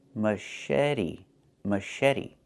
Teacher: The CH makes a soft sh sound, like in fish, mush.